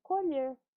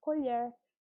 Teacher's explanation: No segundo, nós temos o O com um som aberto, um fonema aberto ali, colher, que deixa o substantivo. Então, o verbo tem um som um pouco fechado e o substantivo tem um som agudo, aberto